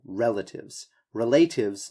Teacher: The pronunciation of relatives, make sure that you're emphasizing this first syllable